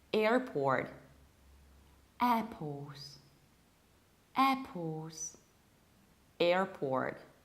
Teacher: then we pronounce final R from port, contrarily to the British accent.